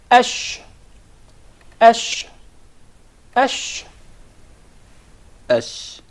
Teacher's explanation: So the sheen is articulated from the middle of the tongue and what lies opposite to it from the upper palate or the roof of the mouth.